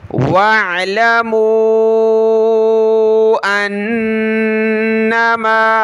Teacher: حمزہ کو نون کے ساتھ ملایا، غنہ کریں گے · عین کو گلے سے نکالیں، اس الف کو نہیں پڑھنا